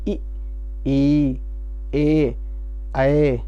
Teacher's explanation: आप देखें कि जबान का आगे का हिस्सा ही हिलता है, आगे का हिस्सा जो है वो हिलेगा। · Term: अग्रस्वर